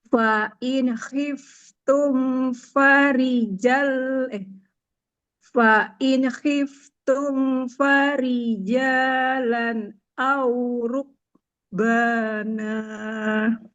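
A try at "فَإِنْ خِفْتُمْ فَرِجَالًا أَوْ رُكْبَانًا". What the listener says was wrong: Fa in khiftum, huruf nun sukunnya jangan mengalir. Jangan mengalir, jangan betul. Jangan fa in, fa in khiftum.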